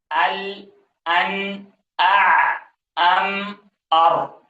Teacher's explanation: ان میں درازی ہے لیکن اس مقدار میں نہیں ہے جتنے کہ رخاوت کے حروف میں درازی آتی ہے آواز میں، تو اس وجہ سے ان کو حروف بینیت کہا جاتا ہے، یہ درمیانے حروف ہے۔